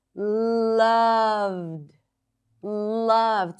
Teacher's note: she stretches it not only by elongating the vowel, but also elongating the consonants